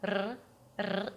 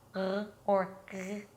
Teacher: It could be a trilled R, r, r. It could be an R that is produced in the throat